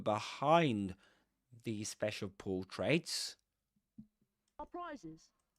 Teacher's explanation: the accented word there is behind because these special portraits special portraits was mentioned before, right?